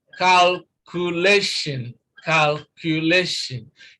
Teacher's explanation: And this is 4. So we place stress on the second syllable from the end of the word